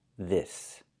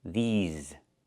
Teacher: We use the long e like green beans and the sound with voice and vibration like in zebra.